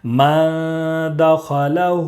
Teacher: نون ساکن کے بعد حروف اخفا کے 15 حروف میں سے دال ہے، اس لیے نون ساکن کی آواز کو ناک میں چھپا کر پڑھیں گے۔